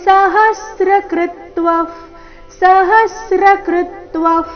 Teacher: ಹ ಮತ್ತೆ ಕೃ ಮೇಲೆ ಆಘಾತ